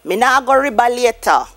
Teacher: So the V is replaced with the B.